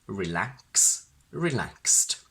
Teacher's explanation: Box, boxes, fix, fixes. And since s is a voiceless sound, the simple past of verbs ending in x is always pronounced as t